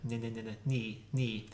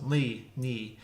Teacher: take your palatal L, make an N out of it, ni, and that's your sound difference.